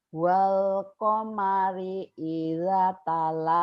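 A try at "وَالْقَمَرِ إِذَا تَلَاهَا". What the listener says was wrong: Idanya panjang Bu. Idanya kan matobi.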